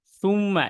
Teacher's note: প্রথমে মুখটা গোল করে তারপর সরাসরি সাথে সাথে চলে যেতে হবে আপনার ওয়াজিব গুন্নার দিকে